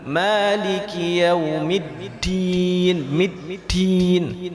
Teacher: Dan hati-hati huruf dal itu jangan dibaca berangin.